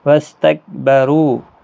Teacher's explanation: را پور پڑا جائے گا پیش کی وجہ سے